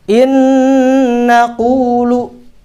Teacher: nun sukun bertemu dengan huruf nun ini benar-benar pindah dimasukkan ke dalam huruf nun berikutnya